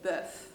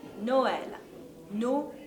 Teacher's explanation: we say the O and then we say the E it's not all mixed together